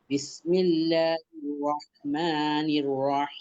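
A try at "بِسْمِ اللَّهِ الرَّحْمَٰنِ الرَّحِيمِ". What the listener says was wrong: ধরার সময় আপনার খুব দ্রুত হয়ে যাচ্ছে, হ্যাঁ, তাসদিদ দিয়ে হির রহ, হির রহ।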